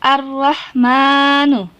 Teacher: alif lam bertemu dengan huruf Syamsiah maka huruf alif lam nya hilang atau lebur langsung masuk kepada huruf sesudahnya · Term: Alif Lam Syamsiah